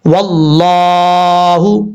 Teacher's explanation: لفظ اللہ سے پہلے زبر ہے اس لیے اس کو پر پڑھا جائے گا